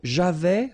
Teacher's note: So j'avais, final S not pronounced.